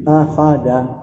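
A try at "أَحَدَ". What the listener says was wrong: Lagi Bi, pelan-pelan dikit, jangan ngebut Bi. Dibuka sedikit lagi Bi. Ahada. Da. Jadi vokal A-nya kurang jelas sedikit Bi.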